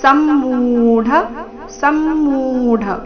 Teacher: ಸಮ್ಮೂಢ ಮು ದೀರ್ಘ ಮುಂದೆ ಡ ಮಹಾಪ್ರಾಣ ರಸ್ವ